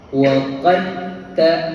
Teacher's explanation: Jadi kita kena masukkan sifat dal ke dalam ta. Maksudnya waktu nak baca kita sebut dal sikit dan hujungnya lepaskan dengan ta. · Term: idgham